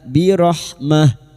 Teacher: tak marbuta yang dibaca waqaf maka bunyinya ha